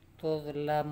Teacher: Tuzlamun dibaca 2 harokat mad tabi'i, 6 harokat mad arid lis-sukun.